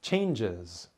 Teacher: exciting changes changes the word changes comes from the word change to pronounce changes add a syllable before you pronounce the Z sound